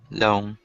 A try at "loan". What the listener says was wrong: Good. Nice job with the pronunciation of loan. It's a hard word.